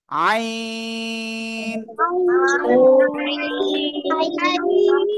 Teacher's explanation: এই আইন অক্ষরটা গলাটা চেপে উচ্চারণ করতে হবে, এই গলার মধ্যখান থেকে